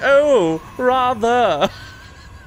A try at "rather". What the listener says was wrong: No, you just pronounced the R. What are you doing?